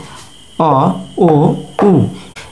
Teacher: যে সমস্ত মৌলিক স্বরধ্বনিগুলি উচ্চারণ করার সময় আমাদের জিহ্বা পিছনের দিকে সরে আসে। যেমন এখানে অ, ও, উ এই তিনটি মৌলিক স্বরধ্বনি উচ্চারণ করার সময় আমাদের জিহ্বা পিছনের দিকে সরে যায়, সেই জন্য অ, ও, উ এই তিনটি ধ্বনি হচ্ছে পশ্চাৎ স্বরধ্বনি।